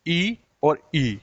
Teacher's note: छोटी ई और बड़ी ई का उच्चारण कहाँ से होता है? जीवा से होता है, यानी तालव्य से होता है।